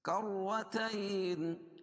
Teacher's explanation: را پر ہوگی کیونکہ رائے مشددہ کے اوپر زبر ہے. تین یا ساکن سے پہلے زبر ہو یا لین ہوتا ہے.